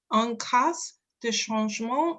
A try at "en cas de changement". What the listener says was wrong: Alors, c'est en cas de changement, on ne prononce pas le S.